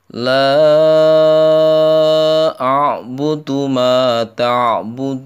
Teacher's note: jadi la itu bacaan mad jaiz ya, mad jaiz munfasil. Panjangnya 5 ketukan atau 2,5 alif.